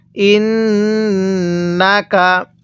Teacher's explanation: এই নুনের মধ্যে আমরা গুনাহ করব, কারণ মিমে নুনে তাসদিদ গুনাহ করা ওয়াজিব